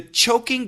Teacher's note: Ch is an aspirated sound which means lots of air ch. The J is a vibrated sound.